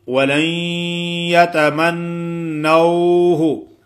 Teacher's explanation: نون ساکن کے بعد یا یرملون کی ہے تو ایسے نہیں پڑھیں گے ولن، نہیں، نون کی جو غننے والی صفت ہے وہ باقی ہوگی، ناک میں آواز آئے گی